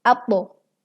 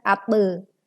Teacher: Huruf do dibaca memantul dengan menebalkan pantulannya, yaitu atbo, bukan atbe, tetapi atbo, dengan kadar setengah harokat.